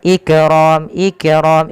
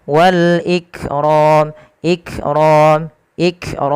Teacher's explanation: apa tertahannya suara yang kedua dia sifatnya Hames mengalirnya nafas maka langkah pertama tahan dulu suaranya Ik baru alirkan nafasnya tapi tidak lama-lama tidak Ik tapi langsung saja Wal Ikrom ikqrom ikqr seperti itu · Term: syiddah